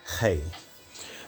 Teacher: you make a constriction in your throat when trying to speak the hey sound. And you say, instead of hey, you say hey. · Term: guttural Het